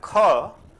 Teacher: H is added. A particular effort of ha is added.